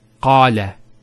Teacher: Notice the elongation of the A sound. Qala. Not qala, qala.